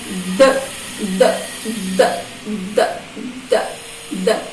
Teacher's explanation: A ponta da minha linguinha se aproxima da parte de trás dos meus dentinhos superiores. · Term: fonema D